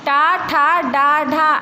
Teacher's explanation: इन व्यंजनों का उच्चारण मूर्धा यानी मुंह की छत यानी जो मुंह के ऊपर वाला भाग होता है वहाँ से हम करते हैं। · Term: मूर्धन्य